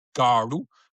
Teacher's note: with a retroflex d